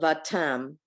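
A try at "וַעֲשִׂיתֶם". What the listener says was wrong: No, read all the syllables. Va, I want to hear every syllable. Va, no, an I in silent. Va, No, there's another letter there. The, they are sitem. Do you see do you see it? The sitem?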